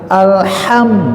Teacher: Kalau secara makhraj bahwa ini adalah masuk kelompok al-halqu, artinya tenggorokan yang ada posisi di wastol halki, artinya tengah-tengah ya, semakhraj dengan ain, jadi ini perlu adanya satu energi ya, kekuatan bahwa di tengah, bukan alhamdulillah mah biasa aja gitu kan, karena alhamdulillah masuk ke ha besar. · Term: huruf hams